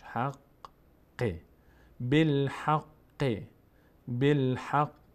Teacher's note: قاف دوبار خوانده میشه، یک بار به همراه فتحه ها، یک بار به همراه کسره خودش